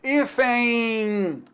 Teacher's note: esse N aqui, meu amigo, ele é uma letra que produz o som da semivogal I